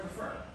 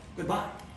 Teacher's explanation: It sounds like a ba-bum, ba-bum, ba-bum. Like an unstressed syllable followed by a stressed syllable. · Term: Iambic meter